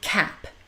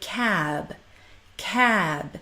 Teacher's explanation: before the P ending we say cap short and sharp but before the B ending we say cab cab we stretch out that a now why do we do this the P sound is unvoiced · the P sound is unvoiced we do not use our vocal folds we do not add any resonance to that sound · So in cap, the A is short and sharp. In cab, we lengthen it.